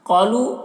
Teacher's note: قاف کو پر پڑھیں گے، الف مدہ ہے